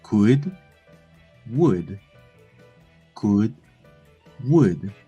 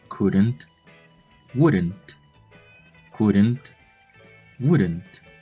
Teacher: the U sound is shorter and not that rounded as the normal U. Segundo, la U es más corta y no es tan redonda como la U normal.